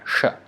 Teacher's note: Sh when the tongue is almost touching at the middle of the palate. Sh is this sh from behind, sh.